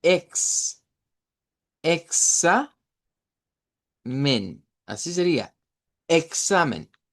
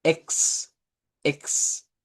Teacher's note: si yo les dijera, miren, hagamos en español el fonema examen, sería una K y una S